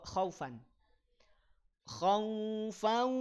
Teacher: berhenti di tanwin fathah setelahnya Alif maka jadi Mad iwad dua harakat panjang dua harakat